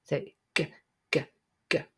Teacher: it's a voice sound so you can feel your throat vibrate when you say it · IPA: /g/